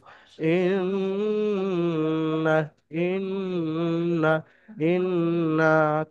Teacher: নুনের উপরে যেন টান হবে না কিন্তু গুন্না হবে এক আলিফ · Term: নুন মুশাদ্দাদ